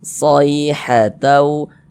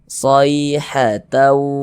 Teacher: Berhati-hati ketika mengucapkan huruf lin yang terjadi pada huruf ya sukun. Jangan sampai condong ke huruf e. Jangan dibaca say condong ke huruf e, jangan.